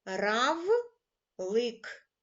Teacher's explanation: в слові Равлик останній звук приголосний твердий приголосний